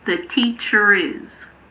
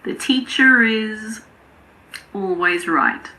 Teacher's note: In American English, it's teacher, but in British English it's teacher. However, if the following word starts with a vowel sound, we normally pronounce the R in British English as well.